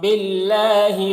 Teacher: अल्लाह के लाम को यहाँ पर बारीक पढ़ेंगे